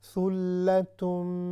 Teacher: جہاں پر بھی شد آئے گی وَثُلَّ اس طرح ہم نہیں پڑھیں گے، صرف غنے پہ جو ہے آواز رکے گی شد پر. ثُلَّتُم، بہت زیادہ بھی نہ ہو اور بہت کم بھی نہ ہو.